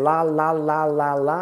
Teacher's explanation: your tongue goes up to what we call the roof of your mouth the roof of your mouth la okay that is where 99% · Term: letter L